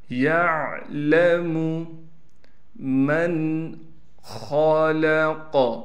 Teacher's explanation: یعلم من خلق، نون پر غنہ نہیں کیا جائے گا، خا کو موٹا کر کے پڑھنا ہے، لام کو باریک پڑھنا ہے، قاف کو بھی موٹا پڑھنا ہے قلقلے کے ساتھ